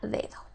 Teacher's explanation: la primer d es una oclusiva mientras que la segunda d es una fricativa